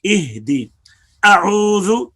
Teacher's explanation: حمزہ اقصی حلق سے نکلا ہے، عین وسط حلق سے نکلا ہے. دونوں حروف جو ہیں آپس میں قریب مخرج ہونے کی وجہ سے متقاربین ہیں، تو ان دونوں کو بھی صاف پڑھنا چاہیے.